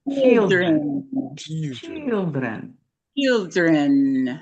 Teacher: Yeah, this is when we talk about how long you hold something, the duration. I want you to hold that E sound a little bit longer.